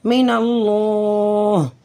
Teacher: لفظ اللہ سے پہلے نون کے اوپر زبر ہے، تو اس لیے اس لفظ اللہ کو ہم موٹا پڑھیں گے